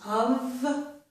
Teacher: It ends in the letter F, but it makes a V sound, the voiced sound, okay? So this is of with a V sound.